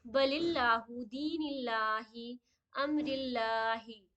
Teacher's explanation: تینوں میں دیکھیے زیر زیر اینڈ زیر آئی ہے تو اللہ کے نام سے پہلے جب بھی زیر آ جائے گی تو اللہ کے نام کو بالکل ہی باریک پڑھی جائے گی